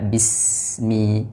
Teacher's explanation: P pi tapi Bi sempurnakan harakat kasrahnya vokalnya i bi berikutnya huruf Sin sukun Jelaskan aliran nafasnya kemudian suara desisnya dan jangan dipantulkan sehingga terbaca Bismi tapi dibaca Bismi berikutnya mim kasrah disempurnakan Mi